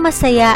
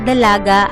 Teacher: Mabilis ang masaya, malumay naman ang dalaga.